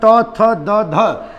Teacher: ये हमारे चारों दंत से बोले जाते हैं